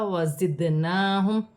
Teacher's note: دال ساکن ہے، دال میں قلقلہ پیدا ہوگا